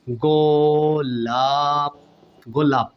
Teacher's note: প অ টান হচ্ছে না প শেষে অ টান আসতেছে না